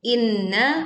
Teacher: Inna baca dengung tidak tergesa.